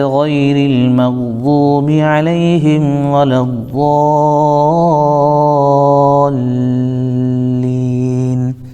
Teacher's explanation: لام کے اوپر بھی تھوڑا رکنا ہے چونکہ لام تشدید ہے اور تشدید والے حرف کو سختی کے ساتھ پڑھا جاتا ہے